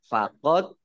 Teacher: dal sukun bacaan kolkolah, dibaca memantul, ditampakkan pantulannya.